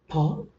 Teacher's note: there is a sudden release, a sudden opening of the lips, so which resulted into production of the sound called as a plosives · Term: bilabial plosive